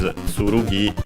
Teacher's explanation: accented, yes, accented on the last syllable, while ken is accented, so accented on the ke, ken.